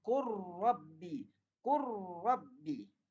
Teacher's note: Dia masuk terus pada huruf ra. Sebab idgham.